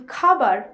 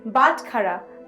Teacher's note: It is representing the voiceless aspirated velar plosive sound. The pronunciation is similar to the kha in khalifa in English.